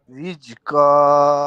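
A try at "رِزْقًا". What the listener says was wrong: রিজ কেন জিম হইটা রিজ না ভাইয়া একটা হচ্ছে জিম রিজ আর হচ্ছে জা জা রিজ রিজ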